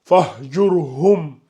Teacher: le ra ici, il est emphatique parce que la lettre qui le précède porte une dhamma